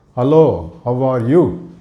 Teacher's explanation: There is no, what we call, this falling intonation or the rising intonation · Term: flat Indian English